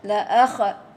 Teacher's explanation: Zal ya. Tidak boleh berqalqalah. La akhad. Tahan dia, break dia ya.